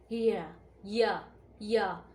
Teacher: अर्ध स्वर व्यंजन। अर्ध स्वर व्यंजन की मुख्य विशेषता यह होती है कि यह बिना रुकावट के अपनी जो मुंह की हवा है बिना रुकावट के बाहर निकालते हैं। जैसे स्वरों में आ इ उ ऊ ऐसे ही य इसलिए इसे अर्ध स्वर व्यंजन कहा जाता है।